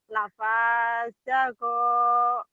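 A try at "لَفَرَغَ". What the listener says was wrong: Lafazagu. Bukan za ya, di sini ro.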